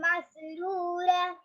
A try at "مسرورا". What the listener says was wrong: مسرورا حرف را کو موٹا پڑھیں گے مسرورا